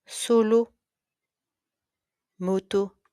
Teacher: The clean uh e. O is rounded and steady